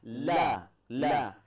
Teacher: Huruf la itu gigi atas, di belakang gigi kelinci itu langsung tempelkan lidah. La. Jadi jangan keluarkan lidahnya.